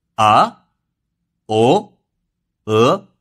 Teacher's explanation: The second tone is a rising tone, with a tonal value of 3/5